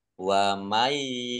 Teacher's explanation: Allahnya dibaca tipis karena harakatannya kasrah · Wa may yal'anillahu nun sukun bertemu dengan huruf ya yaitu ghum bi gunnah masuk dengan mendengung yaitu mendengung ya ditandai ya-nya ada tasdidnya biar tampak mendengung maka harus ditahan kurang lebih 2 harokat. Wa mayyal anillahu, Allahnya dibaca tipis karena harokat bukannya kasroh.